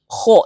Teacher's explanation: Kho ini huruf tebal, isti'la, ya, lidah bagian belakang diangkat. Kho, tapi bibir tidak boleh maju karena kho ini bukan huruf bibir, dia huruf tenggorokan bagian belakang, ya.